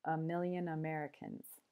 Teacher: the schwa sound so here a just becomes a and million mil is a stressed syllable so it gets its full vowel sound if but then yawn just gets the schwa yawn and then · it has seven syllables and five of those syllables have the schwa sound so here a just becomes a and million mil is a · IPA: /ə ˈmɪljən əˈmerəkəns/